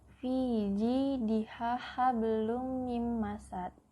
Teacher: Karena ada domatain bertemu dengan huruf mim, cara membacanya masuk dengan mendengung. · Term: idgham bigunah